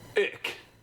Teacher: But honestly, just say ick. All the cool people in the north half of Germany say ick instead of ich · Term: Berlin accent